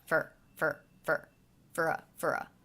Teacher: I most definitely reduced this vowel to the schwa